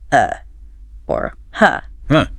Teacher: it's like a short relaxed u sound like a very relaxed U · it's that neutral vowel sound that pops up everywhere in English everywhere especially in unstressed syllables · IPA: /ə/